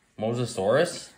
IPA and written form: ˌmoʊzəˈsɔːrəs (Mosasaurus)